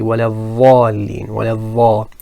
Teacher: Now the reason that happens is it's a completely incorrect makhraj. So the tongue is in a completely incorrect location, as in it's touching the tip of the front teeth if you say dha. But that's not the case with the Dad.